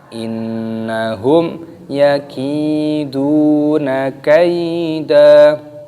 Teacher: Innahum di sini nunnya berharokat tasdid, maka didengungkan, dimasukkan.